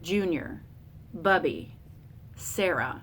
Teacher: Trochee with the stressed, unstressed would be names like Junior, Bubby, Sarah.